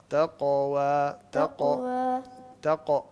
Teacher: काफ को गले से नहीं निकालते। काफ को जबान के आखिरी हिस्से से निकालते हैं।